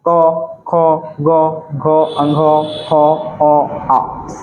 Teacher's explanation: ये सभी वर्णों का उच्चारण स्थान कंठ से होता है